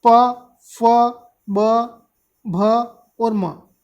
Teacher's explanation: ये पूरा जो प वर्ग है ये ओष्ठ या होठ से आपका उच्चारित होता है, ये ध्यान रखिएगा।